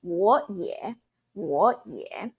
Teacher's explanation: keep the one at the back remain as third tone the one in front of it becomes second tone